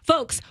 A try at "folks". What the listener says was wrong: You pronounce the L in folks.